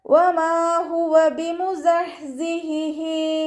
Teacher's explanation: ഹ മഖ്റജ് വരുന്നത് അഖ്സൽ ഹൽക്കാണ്. തൊണ്ടയുടെ അവസാന ഭാഗം, തൊണ്ടക്കുഴി എന്നൊക്കെ നമ്മൾ പറയാറില്ലേ, ആ ഭാഗത്തിൽ നിന്നാണ് ഹ പുറപ്പെടുന്നത്.